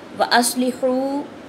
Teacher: حا کو باریک پڑھیں گے، صاد کو موٹا پڑھیں گے۔